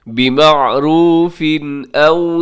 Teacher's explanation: بِمَعْرُوفٍ أَوْ سَرِّحُوهُنَّ، بِمَعْرُوفٍ أَوْ، یہاں پر تنوین ہے، بِمَعْرُوفٍ کے نیچے تنوین ہے، دو زیر کی، اس کے بعد حمزہ ہے تو یہاں پر کیا ہوگا جی، اظہار ہوگا، جسے اظہار حلقی کہا جاتا ہے، مطلب تیزی سے پڑھنا ہے اور غنہ نہیں کرنا